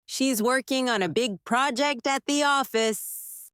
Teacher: Stress working, big project, and office